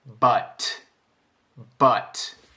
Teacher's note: So we hear the word buT by itself with a very strong T at the end. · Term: The plosive at the end